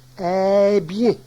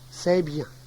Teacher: Ce, le son ce du démonstratif. Ce disparaît souvent en début de phrase